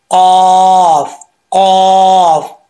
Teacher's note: اس کا مخرج ہے زبان کی جڑ، اوپر والے تالو کا جو نرم حصہ ہے نا، وہاں سے زبان کی جڑیں لگیں گی تو پھر یہ قاف پڑھا جائے گا۔